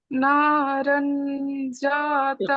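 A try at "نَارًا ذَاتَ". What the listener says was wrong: اخفا کریے، نارن، نارن ذات، نارن نہیں، نارن یہ تو نون پڑا گیا، نارن ذات،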